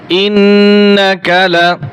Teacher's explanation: নুন জবর না, ইন্না, কাফ জবর কা, ইন্নাকা, ইন্নাকা, লাম জবর লা, ইন্নাকা লা, কা টান হবে না, লামেও টান হবে না